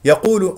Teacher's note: القاف هنا مفخمه مرتبه ثالثه لانها مضمومه نضم الشفتين فيها